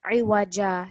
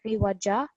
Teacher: We are prolonging this final alif for 2 seconds. Iwaja, 2 seconds.